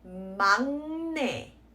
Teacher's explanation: the sound of the N and the G like cancel each other out